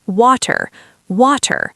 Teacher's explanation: We also don't pronounce the R at the end · In standard British English, or received pronunciation, we maintain a very clear, sharp T sound.